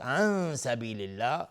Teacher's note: عن سبیل الله، نون ساکن بعد سین اخفای حقیقی. لفظ جلاله ترقیق است، نازک تلفظ میشه چون قبلش کسره اومده